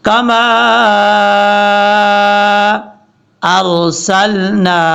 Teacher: را پر پڑھا جائے گا کیونکہ را ساکن ہے، اس سے پہلے زبر ہے، اور نون کے آگے جو الف کے اوپر مد ہے اس کو 2 الف کے برابر لمبا کریں گے.